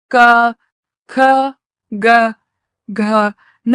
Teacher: గొంతు ద్వారా పలికే క ఖ గ న అక్షరాలను కంఠ్యాలు అంటారు.